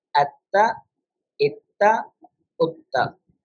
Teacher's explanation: We should pronounce it twice. First by joining with the previous letter, then with its own haraka with a slight pause. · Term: mushaddad